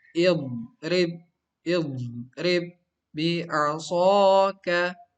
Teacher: pertemuan dua huruf ba, yang satu sukun, yang kedua berharokat. Maka yang pertama yang sukun ini diidghamkan atau dimasukkan ke huruf kedua yang berharokat